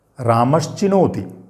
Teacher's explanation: केवल हमने क्या किया, सा की जगह तालव्य शकार कर दिया, बाकी पूरा वही शब्द है।